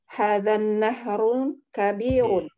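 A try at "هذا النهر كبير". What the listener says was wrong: Aywa hadzan nahru ya tanpa tanwin kabirun.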